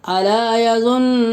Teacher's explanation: نون کے اوپر تشدید ہے، نون مشدد میں ایک الف کے برابر غنہ ہوگا